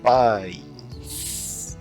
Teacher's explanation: Eu tô com o A, eu vou fechando, faço o I, daí eu alonguei o S aqui, né? Paz.